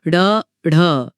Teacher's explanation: इनके उच्चारण में जीभ पहले ऊपर मूर्धा को छूकर फिर झटके से नीचे आती है। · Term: उत्क्षिप्त व्यंजन